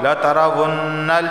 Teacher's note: لترون نون مشدد ہے تو لہٰذا یہاں بھی غنہ ہوگا، جب بھی نون پر تشدید آئے تو وہاں غنہ ہوتا ہے۔